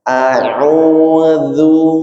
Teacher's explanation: sebelum du bibirnya ditarik sebentar. Nah, itu tujuannya adalah supaya huruf dalnya tetap tipis